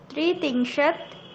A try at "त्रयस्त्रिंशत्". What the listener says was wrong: न न, त्रि न, त्रयोस्त्रिंशत्,